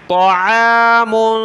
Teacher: طا کو موٹا کریں گے میم پر ناک میں آواز پیدا ہوگی عین کو گلے سے نکالیں